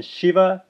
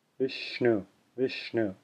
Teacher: except that for this one the teeth are slightly apart so for the first one sha as in Shiva with teeth fully closed together the second one sha as in Vishnu with teeth slightly opened